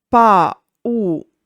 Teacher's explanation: the hiatus stays even in the derived words, even if the I and U lose their accent